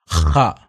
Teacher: ഹ തൊണ്ടയിൽ നിന്ന് എടുത്തു കൊണ്ടുവന്നു ഉച്ചരിക്കേണ്ട അക്ഷരം